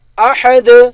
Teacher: اور اگر وقف کریں گے تو دال پر قلقلہ ہوگا